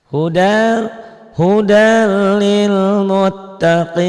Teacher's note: Hudal ini hudan jadi hudal. Tanwin ketemu lam. Idgham bila gunnah ya.